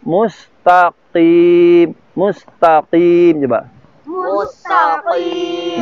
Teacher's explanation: Ya, ini qaf dengan kaf ini memang berdekatan. Qaf itu pangkal lidah sekali, kaf di depannya. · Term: huruf qaf